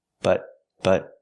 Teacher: T and but is a stop te but but not but don't release the T